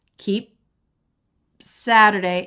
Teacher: So keep, this is a stop consonant, and he doesn't say keep Saturday. We don't release the P and then make the S. We just stop the air for the P.